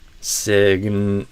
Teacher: before I release the back of the tongue for the G, I touch the tip of the tongue at the same time, like before I release the G. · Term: overlap